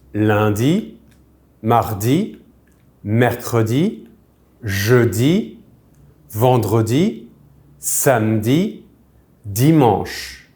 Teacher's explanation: we do eat the middle syllable of some of these words when we speak